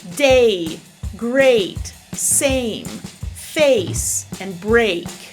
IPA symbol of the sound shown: eɪ